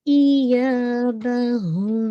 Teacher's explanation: یا کو آپ نے 2 کاؤنٹ اسٹریچ کرنا ہے، یہ مد الاصلی ہے